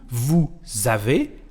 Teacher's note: la S en francés, cuando se trata de una conexión, siempre se pronuncia como una Z francesa, es decir, el sonido Z.